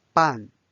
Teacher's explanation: notice it's a fourth tone so it's a falling tone